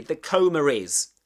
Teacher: the intrusive R likely popped up between coma and is making it sound like coma is.